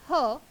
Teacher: ह हा महाप्राण आहे, कारण ह चा उच्चार करत असताना फुफ्फुसातून जोरात हवा बाहेर फेकली जाते